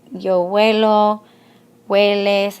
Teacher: And in Spanish, we don't pronounce that H.